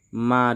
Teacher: harus kita panjangkan menjadi lima harakat karena ini merupakan Mad Jaiz munfasil